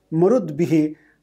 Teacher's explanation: So in nominative and instrumental there is no change, marut, maruta, but in instrumental plural, marud bihi, ta changes to da.